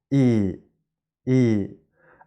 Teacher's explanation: E as in seed is long and tense